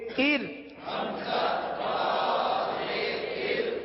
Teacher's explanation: ار والی را کو باریک پڑھیں گے، کیونکہ را ساکن سے پہلے زیر ہے، لہذا را کو باریک پڑھیں گے.